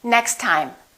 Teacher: We only pronounce one T.